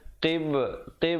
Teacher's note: qib ada qalqalah di situ, qalqalah sughra, ba bertanda mati